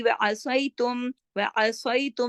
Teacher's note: فی الامری وعصیتم, سواد موٹا پڑھا جائے گا